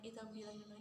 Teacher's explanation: Selanjutnya idgham bilahuna ini masuk tanpa mendengung